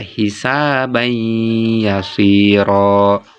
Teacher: Misalnya tanwin bertemu ya hisaban yasiro, gunanya ditahan 3 harokat ya. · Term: idgham